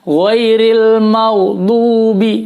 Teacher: Jadi ketika disebut meskipun barisnya sukun, bibir itu agak maju. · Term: huruf isti'ala